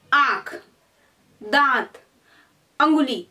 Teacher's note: इनको हम जब बोलते हैं तो वायु हमारे मुंह से और नाक से दोनों से बाहर निकलती है, जिन्हें हम अनुनासिक कहते हैं।